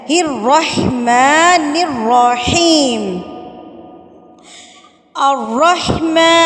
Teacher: ماں کو اپنے الف کے برابر کھینچنا ہے۔ الرحمن الرحیم، الرحمن، را کو آپ نے پر کر کے پڑھنا ہے، تھوڑا سا ہونٹوں کی شیپ کو گول کریں گے نا تو آپ کا را جو ہے وہ پورا ادا ہوگا۔